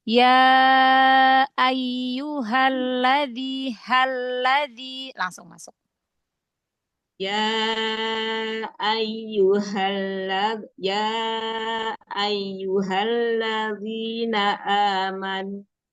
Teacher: alif lam syamsiah langsung masuk ke huruf syamsiahnya, ke huruf lamnya ya